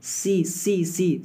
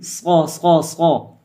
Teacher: سین کی سیٹی کیا ہوتی ہے؟ باریک ہوتی ہے، اور صاد کی موٹی ہوتی ہے